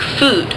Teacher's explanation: Make it towards the back. Your tongue's going to be as high in your mouth as it can be, and your lips are going to be rounded. And remember, it's towards the back, so like food. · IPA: [u]